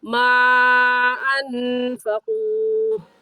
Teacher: ماں پر مد کریں گے کیونکہ حروف مدہ کے بعد حمزہ اگلے کلمے میں ہے تو اس مد کو نام ہوگا مد منفصل اور مد جائز اور اس مد کو 3 الف کی مقدار کھینچیں گے. ایسے کہیں گے ما انفقوا.